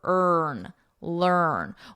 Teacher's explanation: you can just think of the vowel is just not even there